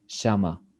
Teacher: you want to learn the Argentinian accent, you can, for example, pronounce the double L like sh, and say shama